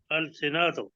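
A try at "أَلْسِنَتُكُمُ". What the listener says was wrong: نہیں نون کو لمبا نہیں کریں۔ جی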